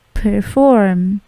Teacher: P-nya plosif tetapi tidak terlalu besar plosifnya, bukan perform tapi perform.